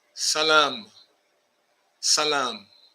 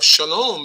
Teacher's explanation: Arabic here oh yeah we have Salaam Salaam so you noticed since Arabic was not affected by the Canaanite shift its vowels are ah and ah salon we have shalom in Hebrew loam because it was affected